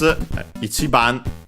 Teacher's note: accented on the chi, ichiban, as often is the case for these combinations of number plus counter.